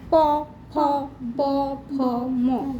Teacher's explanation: প ফ ব ভ ম এগুলো উচ্চারণ করতে দুটো ঠোঁটের সঙ্গে ঠেকছে। দেখ, প ফ ব ভ ম, ঠোঁটের সঙ্গে ঠেকছে। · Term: ওষ্ঠ বর্ণ